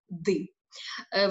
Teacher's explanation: повітря повноцінним повітряним струменем виходить через ротову порожнину, отже звук ротовий, ще раз кажу, потрапляє на кінчик язика і виходить через центр ротової порожнини.